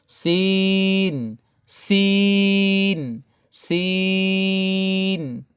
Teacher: সিন উচ্চারণে 3 আলিফ টান দিতে হবে।